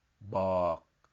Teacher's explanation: It's a low, sad tone.